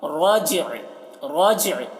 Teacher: را کو پر پڑھ رہے ہیں اور جیم میں قلقلہ ، رجع، رجع، دیکھیے یہاں پر وقف کر رہے ہیں عین